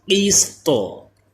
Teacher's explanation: طا ساکن ہو جائے گا، طا میں کلکلا بھی ہو کیونکہ حروف کلکلا بھی ہے طا. قیسطو، قیسطو یعنی قیسط، تا ادھر آواز رک نہ جائے بلکہ تو ایسے آواز ہے، یہ کلکلا اس میں کرنا ہے.